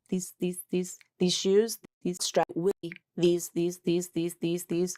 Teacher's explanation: You might not really change the vowel, but it will be said faster. It will be not stressed typically.